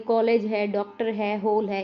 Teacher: यह ध्वनि अ और ओ के बीच होती है। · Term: आगत स्वर